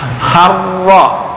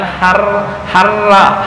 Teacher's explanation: kalau ini tafkhim harro ya, bukan harra ha